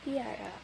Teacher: palatalisasi, yaitu ketika bagian lidah naik ke langit-langit mulut keras